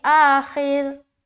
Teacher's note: Stopping की सूरत में तो सुकून लगाना पड़ेगा हर हाल में। तो उससे पहले वाले हर्फ के नीचे देखे ज़ेर है तो इस रा को हम बारीक रखेंगे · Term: रा को बारीक